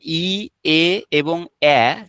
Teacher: ই, এ এবং এ, এই সাউন্ড গুলো সামনের দিক থেকে উচ্চারিত হচ্ছে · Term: সম্মুখ স্বরধ্বনি